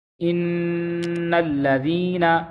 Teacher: تو یہ جو آواز ہے یہ ناک میں جا رہی ہے تو اسے غنہ کہتے ہیں